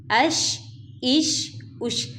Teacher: حمزہ زبر شین اش، حمزہ زیر شین اش، حمزہ پیش شین اش، اش اش اش۔ اب شین کو ہم پڑھیں گے تو نرمی سے، لیکن اس میں ہم تفشی پیدا کریں گے، یہ جو اش اش اش، ٹھیک ہے، یہ تفشی کی ساؤنڈ اس میں لے کے آئیں گے۔